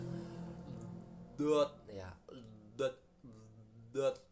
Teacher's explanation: dot bertempat pada salah satu tepi lidah.